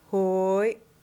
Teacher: The glottalized Y is the same as the Y, but with the back of the throat closed.